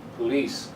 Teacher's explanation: the second syllable is a strong one